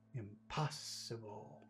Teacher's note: Where's the accent in impossible? Impossible. It's in the middle. Pos. Make it big, make it longer.